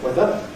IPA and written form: ˈweðə (weather)